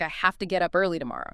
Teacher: Have to frequently becomes hafta